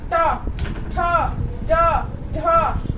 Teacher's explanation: जो मूर्धा से हमारी जीभ जो है ऊपर मूर्धा से टच करती है। उसके बाद ता वाली जो लाइन होती है वो दंत से होती है।